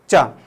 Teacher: चा बोलोगे तो ऊपर जीवान तुम्हारी टकराएगी गुंबद पे और फिर वापस नीचे आएगी, यहाँ जगह आएगी, ठीक है। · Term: स्पर्श संघर्ष